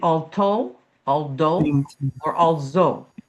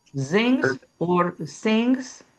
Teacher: the TH, they don't have TH. They put a T or a D or an S or a Z.